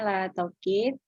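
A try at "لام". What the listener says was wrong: Bukanlah kalau la itu jadinya lam alif. Kalau ini diajak lam. Alamu.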